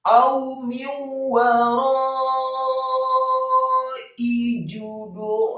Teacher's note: Kemudian wawunya fathah satu harokat, ro-nya dibaca tafkhim tebal dengan mat yang sempurna, dengan panjang yang sempurna, harokat yang sempurna, 4 sampai 6 harokat